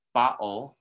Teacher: And for some people, it sounds like a D sound. If we have the word bottle, there that's a glottal stop, and it depends on your variety.